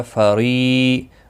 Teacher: فری را زیر کی وجہ سے باریک پڑھا جائے گا